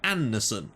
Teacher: it's a very soft D, so it's not really pronounced, but it's sort of implied